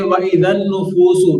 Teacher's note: نون مشدد ہے نون مشدد کی وجہ سے یہاں غنہ کریں گے